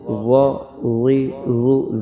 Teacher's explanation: غا موٹا لیکن نرمی سے: غا زبر غا، غا زیر غی، غا پیش زو، غا غی غو۔